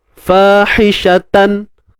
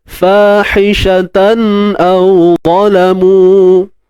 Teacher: Fahishatan tan tu gunnah asli. Benda tu kita tak payah buat. Dia secara tabi'i dia datang.